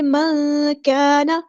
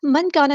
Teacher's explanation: من كان، من کانا نہیں پڑھنا، نون ساکن کے بعد کو ہم یہاں پہ چھپا دیں گے، اخفا ہو رہا ہے. كان الف مد آیا تو مد اصلی ہوگی، نون کے زبر کو ہم لمبا نہیں کریں گے.